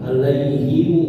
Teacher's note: Jadi kalau dibaca wasol ada tambahan bunyi mu. Nah, ada mu-nya alaihimu.